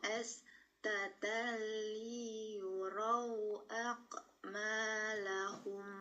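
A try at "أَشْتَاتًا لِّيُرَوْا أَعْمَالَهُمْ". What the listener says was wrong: Tengah lidah naik karena ini huruf shin. Ashtatan liyuraw a'malahum.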